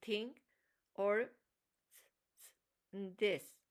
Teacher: Interdental, tongue between the teeth like and think or this.